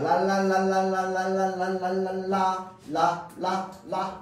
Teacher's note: 하느냐 유음이라고 합니다 랄랄랄랄라 라라라 하면은 라라라 하면서 혀의 양옆으로 소리가납니다 공기를 혀의 양 옆으로 흘러 보낸다